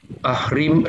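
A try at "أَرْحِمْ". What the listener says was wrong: hurufnya tertukar Pak Bukan ahrim tapi arhim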